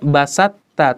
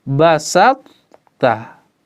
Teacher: Ada sifat itbaq di huruf to baru masuk ke huruf ta